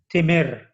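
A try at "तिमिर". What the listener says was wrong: Not Timir. In Hindi, we cut the last vowel. But here, no, as it is written.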